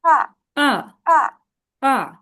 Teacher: 4 নম্বর টোনকে falling tone বলবো, এটা falling হয়ে নিচে নামবে।